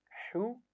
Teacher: ہا کو بھی گلے کے درمیان سے پڑھنا ہے